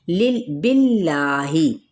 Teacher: जलाला का लाम बारीक पढ़ा जाएगा क्योंकि पीछे ज़ेर है